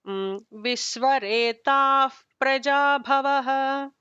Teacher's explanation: So the taha followed by pa, there should be that F kind of a sound.